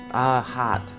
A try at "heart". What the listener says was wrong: with the t as well มีเสียงตัว t ด้วย heart heart โอเคนะครับคำต่อไปครับคำนี้เราเจอตามโหแบบพวกมอเตอร์โชว์ต่างๆครับ pretty